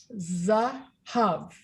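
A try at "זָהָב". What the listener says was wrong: Good. Yerushalayim Shel Zahav. Zahav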